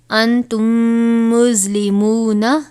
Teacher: میم ساکن کے بعد دوسرا میم تھا، لہٰذا ہم نے غنہ کیا، اور وہ کس وجہ سے کہ یہاں پر ادغام شفوی ہو رہا تھا.